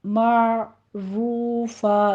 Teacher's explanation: عین کو وسط حلق سے ادا کرنا ہے، لیکن دھیان رہے یہاں پہ قلقلہ نہیں کرنا، صرف اس کو سٹاپ کرنا ہے۔ تھوڑا سا منہ کھولیے تاکہ عین اپنے وسط میں جا کے سٹاپ کر لے۔